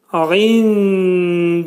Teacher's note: İndillahi kəlməsində ayn hərfinin məxrəci boğazın ortasından çıxarılacaq. Nun səsi, nun hərfi dələ yetişdikdə ixva olacaq. Nunun 1/3 hissəsi dəl hərfinin məxrəcində gizlədiləcək. Dəl hərfi dilimizdəki d hərfinin məxrəci kimidir.